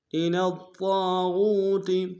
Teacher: طا کے اوپر تشدید زور دیں گے، طا کو موٹا ادا کریں گے، طا کے سالف مدہ ہے، ایک انداز میں کھینچیں گے.